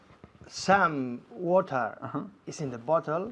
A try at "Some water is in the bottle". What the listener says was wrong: Fantástico, me encanta como dices some, con esta M tan fuerte.